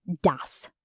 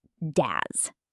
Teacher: The s at the end of dos is a soft s, not a z sound. Ds. Not daz.